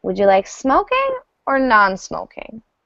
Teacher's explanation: our voice goes up really high and then really low. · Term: closed option